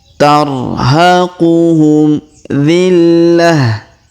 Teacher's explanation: tak marbutah kita rubah menjadi ha sukun ya, karena kita berhenti di sini